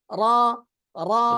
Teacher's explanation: বাংলা ব শূন্য রটা মোটা হয় না, আর আরবি রটা মোটা হয়